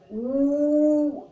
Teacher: અને આ પ્લુત છે તો એનું ઉચ્ચારણ ઉ એમ એકદમ લાંબુ કરવામાં આવે છે